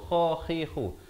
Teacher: kha di hujung kerongko